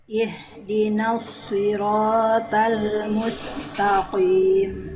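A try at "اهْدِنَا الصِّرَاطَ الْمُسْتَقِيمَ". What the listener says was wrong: Nah, masih ta. Bukan to. To, ta. Musta. Ihdinas siratal musta. Bunda, musta. Ta. Mustaqim. Jadi jangan dilafalkan ta, ta, ta, ta, ta, ta, ta. Ihdinas siratal mustaqim. Karena ta huruf tipis. Jangan ke bawah tebal.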